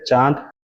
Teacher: اس میں نون تو ہوگا مگر اس کو غنہ کر لیں گے